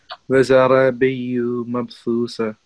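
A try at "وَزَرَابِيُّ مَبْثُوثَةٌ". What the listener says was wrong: Very good. Okay, that's very good.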